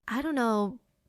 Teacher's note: Falling rising tone. Unsure.